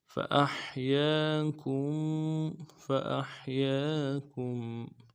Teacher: کم میں کاف کو میم ساکن کے ساتھ ملانا ہے، میم ساکن میں غنہ کریں گے